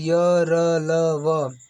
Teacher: जिन व्यंजनों का उच्चारण करते समय जीभ मुख के भीतर किसी भाग का पूरी तरह से स्पर्श नहीं करती है उन्हें अंतस्थ व्यंजन कहते हैं। जैसे इनकी संख्या 4 होती है य, र, ल, व।